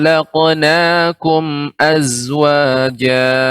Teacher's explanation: kumnya mim mati bertemu dengan alif. Ini dibaca dengan izhar syafawi, dibaca dengan jelas.